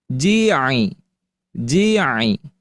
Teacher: pelafalan ain dari tengah tenggorokan. Nah, jangan sampai keluar dari al-khayshum.